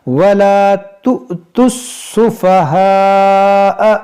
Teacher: یہاں پر بھی دیکھیں یہ تا کو سین سے ملائیں گے اور یہ حمزہ ساکنہ کو جھٹکا دے کر پڑھیں گے